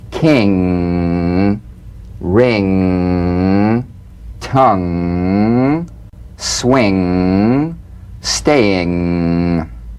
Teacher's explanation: So sing with the back of the tongue in contact with the soft palate. Back of the tongue to the soft palate. · The NG is a voiced, tongue-backed, soft palate nasal consonant. So sing with the back of the tongue in contact with the soft palate.